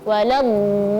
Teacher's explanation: ketika masuk ke lam tasydid, kita harus meninggikan suara sedikit supaya terlihat tasydidnya